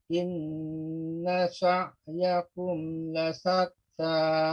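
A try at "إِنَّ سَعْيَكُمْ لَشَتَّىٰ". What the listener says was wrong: Kembali ke lasat, la syatta, shin.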